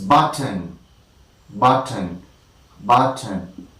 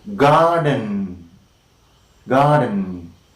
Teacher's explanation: And in the case of the second one, button, button, we have the alveolar consonant T immediately followed by and the air escapes through the nasal cavity, and we can call such kind of release of air through the nasal cavity as nasal plosion.